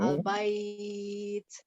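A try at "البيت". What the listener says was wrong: Alnya jangan cepat-cepat. Al-bait. Nggak mungkin pas al itu misalnya alhamdu ya. Alhamdu. Ada agak cepat mungkin, tapi kalau cepat banget kayak tadi nggak mungkin. Alhamdulillah gitu ya. Falyabudu rabb hadzal bait. Nggak mungkin ya. Rabb hadzal bait. Berarti temponya al bait.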